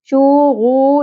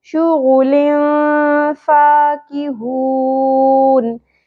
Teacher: یہاں دیکھیں غائن ہے، حروف مستعلیہ میں سے پر کرنا ہے. شو غو، حرکات کو زیادہ نہیں کھینچنا، یہ سنگل ہیں، ایک ایک پیش ہے. شو غو نہیں پڑھنا.